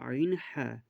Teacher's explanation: দু নম্বর মাখরাজ হালাকের বা কন্ঠনালীর মাঝখানে হতে উচ্চারিত হয় আইনহা।